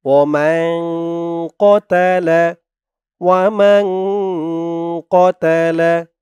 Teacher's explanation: কতালা, এই যে দেখুন, ওই পৃষ্ঠায় নুন সাকিনের পরে এই পৃষ্ঠায় ইকফার হরফ কফ, তাই ওখানে ইকফা নাকের ভিতরে গুন্না করে পড়া হয়েছে।